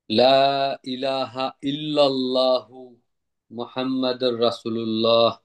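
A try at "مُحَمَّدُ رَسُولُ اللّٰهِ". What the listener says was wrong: মুহাম্মাদ, মুহাম্মাদুর, মুহাম্মাদার না। রসুলুল্লাহ। রসুলুল্লাহ না, রসুলুল্লাহ। মুহাম্মাদুর রাসূলুল্লাহ। রাসূলুল্লাহ। হ্যাঁ, আমি আবার বলে দিচ্ছি, লা ইলাহা ইল্লাল্লাহু মুহাম্মাদুর রাসূলুল্লাহ। ইল্লাল্লাহু না, ইল্লাল্লাহু। লুল্লাহ।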